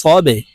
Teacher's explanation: বাকে ধাক্কা দিয়ে উচ্চারণ করতে হবে কারণ বা কলকলার হরফ